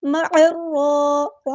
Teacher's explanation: عین کو ہم نے را کے ساتھ ملا دینا ہے، معر، را پہ کھڑا زبر ہے تو الف کے برابر ہم لمبا کریں گے، مد اصلی ہوگی